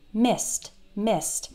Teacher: The E-D sounds like a T when the last sound in the word is unvoiced. So S is an unvoiced sound, S.